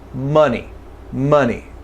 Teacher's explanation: Here we have central vowel O. It's not ah, not O. It's really relaxed. Try to say almost no vowel.